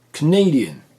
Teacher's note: Attention, si nous passons à l'adjectif de nationalité, il y a 4 syllabes, et donc l'accentuation ne sera plus sur la première, mais sur la deuxième. Canadian. Et du coup, nous avons une diphtongue.